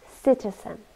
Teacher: three syllables and we stress the first one